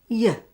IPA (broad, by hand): jə